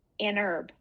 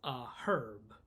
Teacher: in Britain, they pronounce the H.